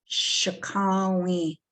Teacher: So the end is nasalized.